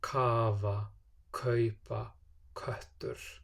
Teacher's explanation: At the start of a word, as we've seen already, it has the aspiration, the small puff of air after it.